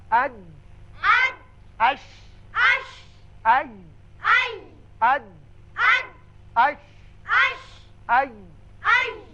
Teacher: زبان کا درمیانی حصہ جب سامنے والے تالو کے درمیانی حصے سے لگتا ہے، چپکتا ہے تو یہ تینوں حروف ادا کیے جاتے ہیں